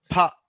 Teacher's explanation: గాలి చూడండి ఎలా కొట్టినట్టు వస్తుంది కదా, అంటే ఒకేసారి ఆపి బయటకు వస్తుంది. అందుకే దీన్ని ప్లాజివ్స్ అంటారు.